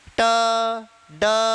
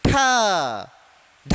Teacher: महाप्राण कहलाएंगे, क्योंकि झटके के साथ क्या किया आपने, वायु बाहर फेंकी। ठीक है, तो इसमें अधिक मात्रा में क्या होगी, श्वास वायु बाहर निकलती है।